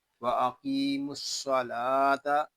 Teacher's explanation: وَأَقِيمُوا الصَّلَاةَ، یہاں قاف جو ہے اس کو پر پڑھیں گے، اور قاف کو ایک الف تک کھینچ کر بھی پڑھیں گے، کیونکہ یہاں یا مدہ ہو رہا ہے۔